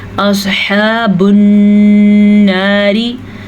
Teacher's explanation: स्वाद को पुर पढ़ना है क्योंकि स्वाद उन हरूफ में शामिल है जिनको पुर पढ़ा जाता है।